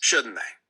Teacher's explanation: doing an intonation that goes falling while you're reading the tag question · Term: falling intonation